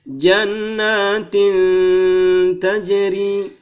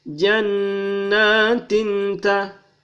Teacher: ini dua baris in ketemu dengan ta, maka dia berdengung